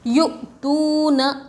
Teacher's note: حمزہ ساکنہ کے پڑھنے میں جھٹکا ہوتا ہے